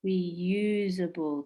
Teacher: And reusable, 4 syllables. Which one is strong? Reusable, the second syllable.